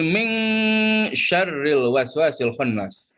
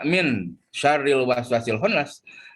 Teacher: cara membacanya itu adalah dengan menggunakan dengung dan ditahan minimal ya tiga harkat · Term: ikhfa